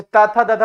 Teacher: जैसे ता था दादा बोलो, दंत से पूरी उसका लगाव है।